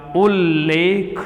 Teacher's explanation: सी नियम की तरफ चलते हैं तो आप ध्यान दीजिए, यहाँ आधे त के बाद अगर ल आता है, ल, ऐसी कंडीशन में आधे त के स्थान पर आधा ल हो जाता है